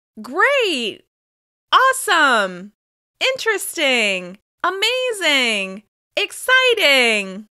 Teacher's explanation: As you can hear, the rising intonation on these exclamations expresses excitement and enthusiasm.